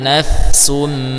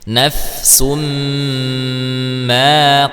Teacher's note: nafsumma ditahan dulu karena mnya bertasdid ya